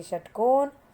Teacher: ये मूर्धा की हेल्प से बोली जाती है, इसलिए ये मूर्धन्य श है